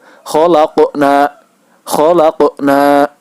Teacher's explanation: Cara membacanya adalah dipantulkan seperti huruf O. Untuk huruf qaf dan huruf ta, cara membacanya yaitu dipantulkan seperti huruf O. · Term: qalqalah kecil